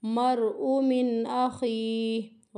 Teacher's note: حمزہ کو نہیں کھینچنا کیونکہ حمزہ متحرک ہے۔ من اخیہ، من کو لمبا نہیں کرنا، ہمیں یہاں پہ غنہ نہیں کرنا، اظہار ہو رہا ہے۔